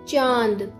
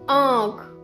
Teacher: इसमें भी हवा मुंह और नाक दोनों से बाहर आएगी। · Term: अनुनासिक